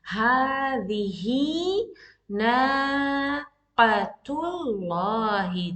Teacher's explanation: Ha, and this alif saghira also tells you the sound of ha is being prolonged for two counts.